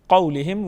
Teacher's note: क़ौलिहिम वाव साकिन से पहले हर पर ज़बर है, वाव लीन है, वाव लीन को जल्दी पढ़ेंगे और नरमी के साथ अदा करेंगे